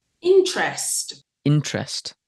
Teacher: You find Southern Brits today will tend to say interest with a strong vowel in the second syllable. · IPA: /ˈɪntrəst/, /ˈɪntrest/